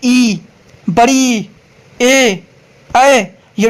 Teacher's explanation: ए total संख्या चार होता है जिसको जीभ के अगले हिस्से से उच्चारित किया जाता है।